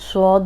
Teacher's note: صاد بھی ہم سیٹی والا پڑھ رہے ہیں لیکن موٹا بھی ہے